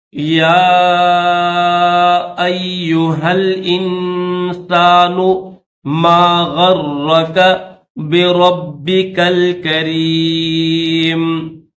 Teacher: یا کے اوپر چھوٹا سا الف بھی ہے اور مد منفصل بھی ہے، تو اس کو 4 سیکنڈ کھینچیں گے